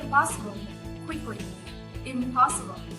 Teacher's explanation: Instead of making an alveolar N, it prepares for the bilabial P by making a bilabial sound instead. The nasal sound then assimilates and becomes M, which is also a bilabial sound.